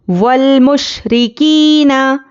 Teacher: काफ या ज़ेर की या मद्दा है, इसको एक अलिफ के बराबर खींचेंगे, नून को जल्दी पढ़ेंगे।